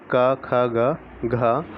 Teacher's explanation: कंठव्य व्यंजन, इनके उच्चारण में केवल कंठ या गले का उपयोग होता है, अतः कंठ और निचली जीभ के स्पर्श से बोले जाने वाले